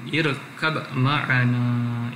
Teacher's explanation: Izhar dia punya arahan sebelum ni izhar pada irkab. Dia tidak masukkan ba kepada mim.